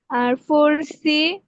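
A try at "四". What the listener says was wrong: হ্যাঁ, আপনার আপনার বলাটা বেশ সুন্দর হয়েছে, তবে হচ্ছে আপনার ফলিং টোনটা, হ্যাঁ, আর একটু ঠিক করতে হবে। ফলিং টোনে এভাবে হবে যে দুই আর, আর, তিন সি।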